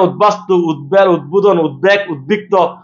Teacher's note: ওই দর সাথে যদি ব যুক্ত হয় ওই বর উচ্চারণ ঠিক থাকবে